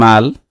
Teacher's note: লামে ওয়াকফ করলে লামটা জজম হবে